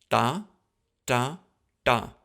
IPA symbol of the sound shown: t̪, t͇, ʈ